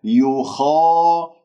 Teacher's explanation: الخاء مفتوحة بعدها ألف، إذن مفخمة مرتبة أولى. يخا لا تقول يخا، لا إعمال للشفاء هذا خطأ.